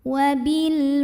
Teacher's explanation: Berikutnya ada hukum alif lam qamariyah karena alif lam menghadapi huruf qamariyah yaitu waw. Maka lam sukun ini kita bunyikan dengan idhar atau jelas.